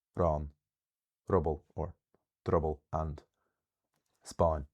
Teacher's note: even though they have initial stress when fully pronounced, um often lose their first syllable · There's also something that happens in Connacht a lot, which was pointed out to me, where some words, a very small group of words that have, even though they have initial stress when fully pronounced, often lose their first syllable